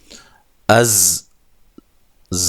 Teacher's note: زا کو زور سے اور سیٹی کے ساتھ ادا کرنا ہے، زور کی زا کی طرح سختی کے ساتھ، زا، ٹھیک ہے۔